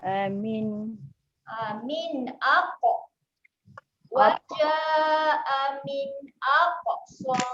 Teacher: Yang ni selalu kita terlepas nak bunyikan lantunan. Kat huruf qaf dia ada sifat lantun.